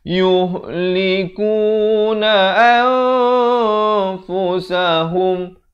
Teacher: ni ikhfa hakiki, samarkan 2 harakat